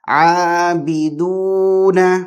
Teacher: تو دو نا، نون کو بھی نہیں کھینچنا ہے، عابدون ما نہیں، عابدون ایک ہی حرکت نون کے لیے، لیکن دال کے لیے 2 حرکات